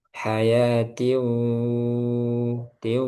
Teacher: Yang antum baca hayatiu, tiu, masuk hidung tapi sedikit.